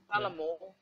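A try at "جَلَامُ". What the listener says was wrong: correct,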